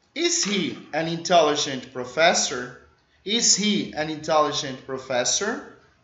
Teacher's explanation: Coloca o acento no fé.